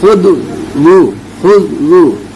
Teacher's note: वाद की आवाज को मोटी करनी है